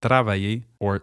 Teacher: For example, the words tra or with the alvolar tap would become tra or here the R sound is made with a movement of the tongue in the front of the mouth whereas the standard French R sound comes from the back of the throat. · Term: rolled R, alveolar tap